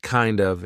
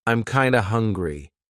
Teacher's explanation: we're turning that of into a schwa. So it's not kind of, it's kinda.